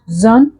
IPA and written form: ʒən (sion)